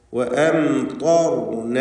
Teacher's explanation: ശേഷം റാ ഉണ്ട്, അതിനും തഫ്ഖീമാണ്. വഅംതർന തടിപ്പിച്ച് പറയുക ത്വാഇനെയും റാഇനെയും